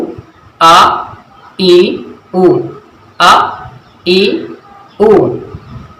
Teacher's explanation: ادنائے حلق سے ہو رہی ہے، حلق کے نچلے والے حصے سے ہوتی ہے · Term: حمزہ کی آواز